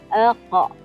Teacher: Rasa di bahagian kerongkong kita. Rasa pangkal lidah bersama langit belakang. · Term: huruf qaf